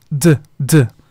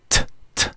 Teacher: D es más suave, tiene menos aire, menos explosiva, digamos, y la T es más fuerte.